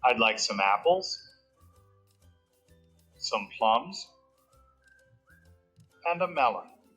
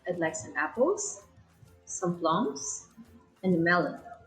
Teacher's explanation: mean stress to indicate that there is more to come and the last item in the list will go down after the last stressed syllable to indicate the end of the list · it's the up, up, down intonation